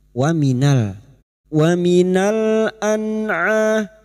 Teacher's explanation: nun sukun bertemu ain idhar halqi. Nun sukun dibaca jelas tanpa mendengung